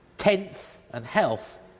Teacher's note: So in English, it's normally alveolar, but with tenth and health, the N and the L are slightly forward, the same position as for Chinese